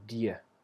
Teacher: And next we have the e vowel, she. And then some speakers will have a d using the tip of the tongue, followed by a y, which is the same sound as you have in the word yes, die, like that.